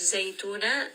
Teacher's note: Zay has a little bit of that buzzing sound.